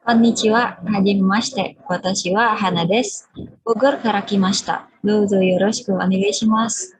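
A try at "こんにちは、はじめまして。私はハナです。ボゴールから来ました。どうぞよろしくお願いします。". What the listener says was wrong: Hai, ii desu ne.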